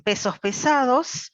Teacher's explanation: en español rioplatense, aspiramos la S, usamos este alófono de la S, cuando está seguida de una consonante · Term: aspirada